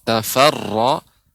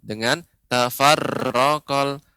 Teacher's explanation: Ya Ibu, pengucapan ra, tafarra, ya, maka ini termasuk ra yang tebal, maka pengucapannya dia diangkat, dinaikkan lidahnya, ya, ra-nya ditebalkan. Wa ma tafarraqal, dengan tafarraqal, dan getaran ra tidak boleh banyak, ya, tidak tafarraqal tapi tafarraqal, tafarra.